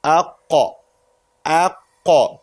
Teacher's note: Qaf is from the back of the tongue